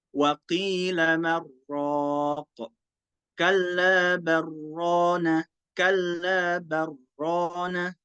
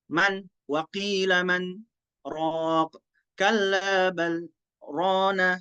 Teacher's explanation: Imam Syu'bah nggak membaca saktah. Dia langsung membaca idgham.